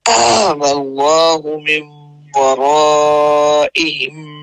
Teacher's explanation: میم مشدد آگے آ رہا ہے تو اس پہ غنہ کرتے ہوئے آگے نکلیں گے۔